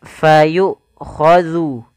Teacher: ketika hamzah itu mati, maka tertahanlah dua-duanya, nafas dan suaranya